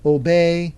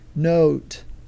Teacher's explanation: pronounced between the short and the long but it's the duration the difference between obey and note as far as the O is concerned is how long it lasts